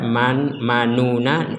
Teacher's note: Tetap harus ada manuna, u-nya dihilangkan. Jadi tetap bibir itu mengisyaratkan huruf dhammah, tapi tidak ada suara dhammah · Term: ismam